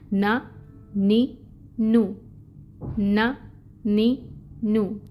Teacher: اور دانتوں کی جڑوں کو زبان لگتی ہے. کون سا حصہ زبان کا؟ طرف اللسان. تو پھر یہ مخرج ادا ہوتا ہے.